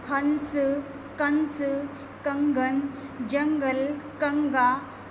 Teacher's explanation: इन्हें बोलते समय नाक से हमें सहायता लेनी पड़ती है और इनका चिन्ह है डॉट, सिर्फ अंक की बिंदी। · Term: अनुस्वार